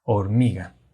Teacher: ¿En dónde se encuentra justamente la sílaba tónica? Es exactamente en la sílaba mi.